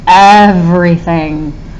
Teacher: Ev. Can you hear how we put a lot of emphasis on ev, less on re? · We do put some emphasis on thing, so I'm going to mark that as stressed.